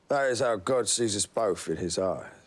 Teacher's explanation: You see, he don't have time for the H's.